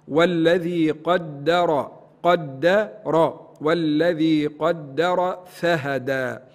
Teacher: وبعد حرف الدال يأتي حرف الراء متحرك بالفتح لابد من تفخيمه